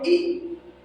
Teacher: जब आप ई बोलोगे तो आप देखिए आपकी जीभ दोनों तरफ होते ऊपर वाले तालू से मिलती है